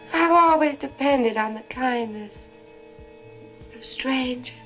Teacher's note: You hear how there's no R in strangers? Strangers. That's a non-rhotic accent. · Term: non-rhodic accent